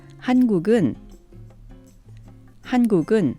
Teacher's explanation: a word and a particle combo will be pronounced like one word